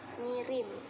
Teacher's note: Terjadi kesalahan pengucapan pada kata kirim menjadi ngirim dengan perubahan bunyi konsonan K menjadi eng